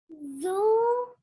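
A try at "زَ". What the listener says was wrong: Not zoo. Look at this is fatha. Take out fatha sound.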